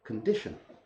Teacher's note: You have to change the sound. And that's where the good old schwa comes in, and it becomes kun. You can say kun really fast.